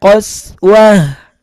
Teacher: ta marbut kalau dalam keadaan waqaf maka bunyinya ha ha besar ya qoswah.